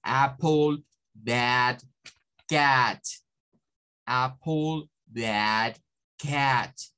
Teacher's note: Vean que hay un movimiento de AE, no es solo la A. Si yo le digo como apple, apple, o si lo digo como bad, bad, estoy quedando el sonido a la mitad, porque solo estoy generando el sonido de la A y no estoy generando el sonido del regreso de la E.